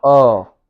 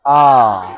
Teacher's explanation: इसमें थोड़ा सा मुह खुलता है अ उसके बाद जो आता है पूरा मुंह खुल जाता है आ